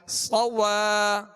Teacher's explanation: کھینچے ادا کریں گے مگر ہونٹوں کو گول نہیں کریں گے، صاد کو پر پڑھیں گے سیٹی کی آواز اس میں پیدا ہوگی